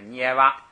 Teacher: 牙是这个鼻音，所以前边有上加字或者前加字，它要读平声